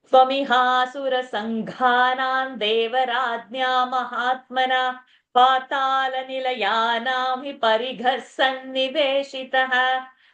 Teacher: So this Sanghana, many people will miss the Mahaprana, will say Sanghana, it is not Sangha, Sangha, and even Parigha, it is Mahaprana and not Parigha.